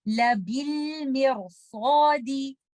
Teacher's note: आप इस लफ्ज में लेटर रॉ को कसरा की वजह से लाइट नहीं पढ़ेंगे बल्कि सौद की वजह से हैवी पढ़ेंगे। इसकी प्रोनाउंसिएशन कुछ इस तरह से होगी लबिल मिरसादी। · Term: रॉ को हैवी